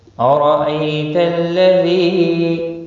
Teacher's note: رو زبر کی وجہ سے پر پڑھا جائے گا، ای یا لین ہے، ذی یا مدہ ہے، ایک الف کے برابر کھینچ کر پڑھیں گے۔